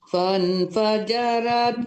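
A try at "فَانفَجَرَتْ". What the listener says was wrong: Ibu, jangan fan ya. Itu nun ketemu fa hukumnya iqlab, ikhfa hakiki, jadi ketemu. Fam ditekan disamarkan ke fa.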